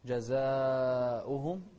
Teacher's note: ننتبه للمد هني، جزاؤهم 4 حركات